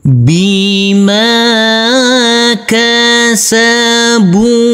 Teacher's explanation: Untuk huruf ba harus kita pantulkan karena ini adalah bacaan qalqalah. Huruf ba di sini kita baca panjang dengan panjang 2 harokat.